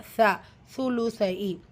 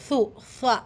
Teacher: நம்மளுடைய நுனி நாக்கு இருக்குது இல்லையா, ஸோ அது வந்து மேற்பற்களுடைய கீழோரங்களில் உரசி வெளியாகக்கூடிய உச்சரிப்பு.